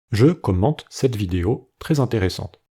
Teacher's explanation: Tous les « e » à la fin des mots sont muets, sauf pour le mot monosyllabique « je » où il est prononcé « e ».